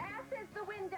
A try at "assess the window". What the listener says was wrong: It's assess the window. You put the wrong emphasis on the wrong syllable.